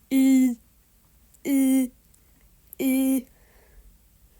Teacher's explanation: it makes like a weird creaky I sound